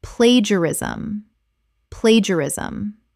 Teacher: Four syllables. The middle syllables collapse together.